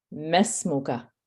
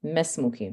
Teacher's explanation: you should not be elongating the meme, and you should not be pronouncing the alif. So you're going straight from the meme fatha to the sin.